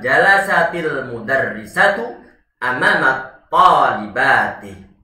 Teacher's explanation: Sukun pertama sukunnya ta, yang kedua adalah sukunnya lam. Tidak bisa diucapkan kecuali nanti diberikan suatu harokat pada huruf sukun yang pertama, yaitu huruf ta-nya. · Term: at-takhallus minas sakinain